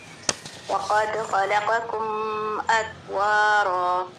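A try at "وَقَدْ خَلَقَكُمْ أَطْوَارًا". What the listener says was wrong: قلقلہ بالکل بھی نہیں ہوا. اتوارا. اچھا یہ جو میم ہے نا یہاں پہ ہم غنہ نہیں کریں گے، کیونکہ یہ جو ہے اس کے بعد الف آ رہا ہے.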